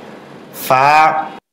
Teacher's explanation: ফা 1 আলিফ পরিমাণ লম্বা হবে, উপরের দাঁতের আঘাত নিচের ঠোঁটের পেটে লাগবে। ফা, এরপর মুখ খুলে যাবে।